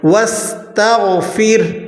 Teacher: سین کو آپ نے باریک اور اسی طرح سیٹی کے ساتھ ادا کرنا ہے